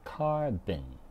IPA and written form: ˈkɑːr.bən (Carbon)